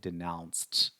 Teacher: When you use the verb denounce in the past form, the pronunciation changes a little bit. So we pronounce it denounced with a t sound at the very end.